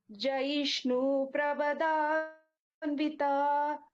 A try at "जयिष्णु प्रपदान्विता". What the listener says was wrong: प्रव இல்லடாப்பா प्रप पा first letter पा